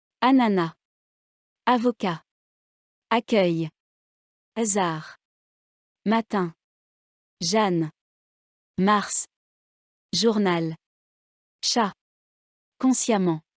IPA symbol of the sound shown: a